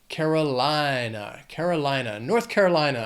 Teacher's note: This state has 5 syllables, but Carolina, the stress is going to be on the third syllable in that word.